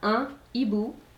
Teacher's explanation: Un hibou, that's an owl, and notice that there is not a liaison. This is one of those special aspiré words which mean that you never make liaison with certain of these words that start with H, this being one of them.